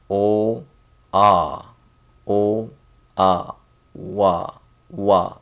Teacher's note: you see O and ah. This is a kind of combination that's compound vowel. So it's together O ah O ah wa wa.